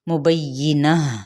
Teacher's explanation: یہاں پہ گول تا پہ ہم نے وقف کیا تو ہا میں تبدیل کر دیا جائے گا